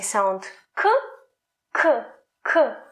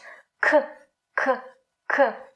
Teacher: The tongue, the back of the tongue, goes up to the soft palate and makes a closure. So if you try to say sound K, K, K, you will feel that the back of your tongue touches the soft palate.